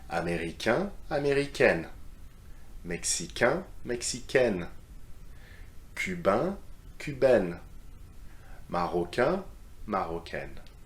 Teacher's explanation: if you add the extra E for feminine, it becomes N, just like the letter N